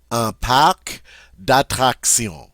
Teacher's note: Notice we do say the C in park because C is one of the consonants we normally pronounce at the end of words.